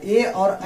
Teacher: देखिए ऐसे तो ये संयुक्त वर्ण है, तो कंठ संयुक्त वर्ण होने के कारण जो है इसको कंठ और तालु दोनों के मदद से बोला जाता है। ए और ऐ जो होता है यह कंठ और तालु दोनों के मदद से बोला जाता है। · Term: कंठ तालु